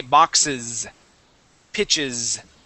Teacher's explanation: when we add that ES, that is going to have a voiced S sound at the end. That will sound like a Z.